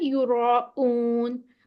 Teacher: good, یہاں پہ جیسے یوراؤن تھا، یہاں پہ حمزہ کی ساؤنڈ ہے، یوراؤن، آپ کو لگے گا کہ یورا کے بعد آواز ٹوٹی ہے